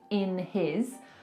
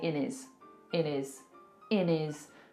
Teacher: So, for example, here instead of saying in his, we're probably going to say in is in is in is taking away that H completely and we've made it into one word · Now the next linking sound is kind of UK specific as well because a lot of the time in the UK we will drop our hes